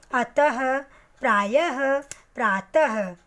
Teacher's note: विसर्ग चिन्ह जब हम लगाते हैं तो इसका उच्चारण ह के रूप में किया जाता है